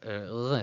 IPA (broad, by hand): ʁ